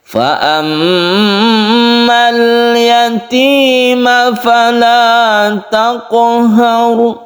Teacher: Sukunkan qaf ini sebagai qalqalah, pantulkan.